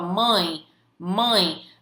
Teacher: Você sente que o A tá tremendo aqui o seu nariz, tá vibrando o seu nariz, ou seja, é um som nasalizado, ele sai pelo seu nariz